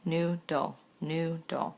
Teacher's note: clearly the long u sound is in the first syllable